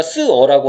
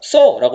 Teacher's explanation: 으하고 어가 만났는데, 아나 어가 탈락하는 게 아니라 뭐가 탈락한다? 으가 탈락한다는 거.